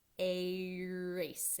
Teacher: we start with an open mouth, flat tongue, erase, and we come down into the R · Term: vocalic R